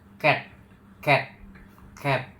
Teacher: bagian belakang lidah menyentuh velum langit-langit